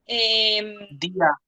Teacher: Tenemos la vocal cerrada con tilde, la I, y la A, vocal abierta átona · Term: hiato